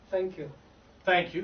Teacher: in that TH, there's no vocal fold sound. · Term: unvoiced